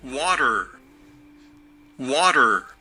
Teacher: On a en plus le T qui se transforme en son D, mais vous entendez que c'est un son schwa.